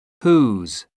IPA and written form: huːz (whose)